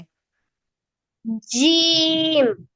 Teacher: শুধু মাঝখান থেকে উচ্চারণ হবে। জিহ্বার মাঝখান উপরে তালুর সাথে লাগায়ে বলেন। জিহ্বার আগা, আগা না, মাঝখান।